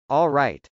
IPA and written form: .ɔːlrˈaɪt (alright)